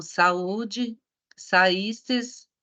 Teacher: E quando vocês tiverem i ou u no meio da palavra, e esse i ou u for tônico, ele vai ser chamado de hiato. Por quê? Porque ele vai ficar separado da outra vogal